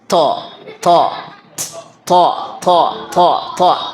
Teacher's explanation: To tidak memiliki sifat hamas. Hamas itu istilahnya kalau kita ini kan bahasa kita itu suara, ada suara desis.